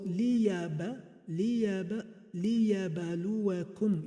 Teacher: Whenever ba has sukun, it is pronounced as qalqala.